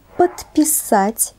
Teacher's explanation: это процесс замены звонкого согласного соответствующим по парности глухим то есть звонкий согласный на конце приставки оглушается если после него стоит глухой согласный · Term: оглушение